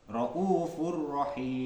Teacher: sifat takrir bergetarnya ujung lidah